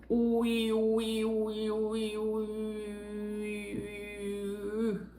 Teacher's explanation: Fica entre o U e o I. E você vai deixar a língua para trás e botar os lábios para frente. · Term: U com trema